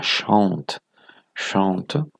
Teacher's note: Cette syllabe fermée est composée d'une voyelle entravée, et cette voyelle entravée est une voyelle nasale.